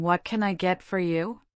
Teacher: The barista's voice goes up at the end of what can I get for you? Indicating a question. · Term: intonation